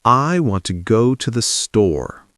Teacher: Ah, the word store is the important part. Yes, in English, we stress the important words.